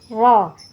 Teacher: Jadi bacanya tebal. Ro, ujung lidah kita menempel ke gigi seri kita yang atas, di belakang gigi seri yang atas, jadi ro. Tidak boleh ro tapi ro.